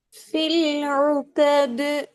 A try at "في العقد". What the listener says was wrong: அந்த கான்னு சொல்லுங்க. க கா ரெண்டு மாதிரி உச்சரிச்சு பாருங்க. ரெண்டு மாதிரி உச்சரிச்சு காட்டுங்க வித்தியாசத்தை பாருங்க. அதாவது கீழ் நோக்கி உச்சரிக்கிறீங்க. கீழ் நோக்கி போறதுல வித்தியாசம் இல்லை. ரெண்டுமே அப்ப மெல்லின தான். வல்லின மெல்லின வேறுபாடுகள்ல நாங்க சொல்லுவோம் ஹுரூஃபுல் இஸ்திஆலா உயர்வு உடைய எழுத்துக்கள், உயர்வான எழுத்துக்கள்.